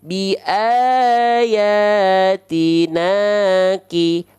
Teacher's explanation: fathah ketemu alifnya sudah kita bahas ya dibaca dengan kadar panjang dua harakat ya maka diayunkan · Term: Mad Thobi'i